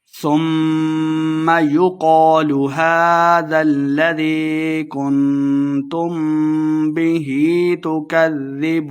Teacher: یقال قاف کو موٹا پڑھیں گے، الف مدہ 2 حرکات لمبا بھی کرنا ہے